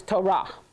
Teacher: I've been saying it Torah for so long now that it's hard to say it any other way, okay? But get your accent on the second syllable, okay? So it's Torah.